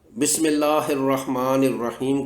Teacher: آگے 2 ہا حلوے والی ہیں، درمیان حلق سے ادا کرنی ہیں تاکہ گول ہاتھ سے فرق کیا جا سکے۔